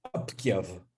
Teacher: the interdentalization of the final stop and its de-emphasis